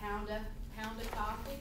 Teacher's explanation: if we're saying things like pound of coffee, many times we'll drop the V even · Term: shortened or reduced